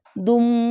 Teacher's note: জন্য দাল ওয়াও পেশ দু আদু এভাবে এখানে গুন্না হবে দু এখানে দু না বলে দুম এভাবে গুন্না হবে